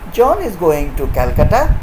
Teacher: it will be a statement john is going to calcutta but if the same statement is spoken with a rising tone it may become a question